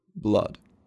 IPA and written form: blʌd (blood)